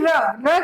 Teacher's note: लुंठित है, यानी एकदम से आपकी जीवा जो है वो ऊपर जाती है और फटाक से नीचे गिर जाती है। वो भी आपकी जीवा बेलनाकार होकर के, यानी बेलन की तरह एकदम ऊपर जाके नीचे चली जाती है।